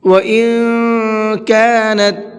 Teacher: ان کے نون کے اندر اخفا کریں گے، اس لیے کہ نون ساکن کے بعد میں کاف ہے، کاف اخفا کے حرفوں میں سے ہے، تو اب یہاں نون کے اندر اخفا کر کے پڑھیں گے۔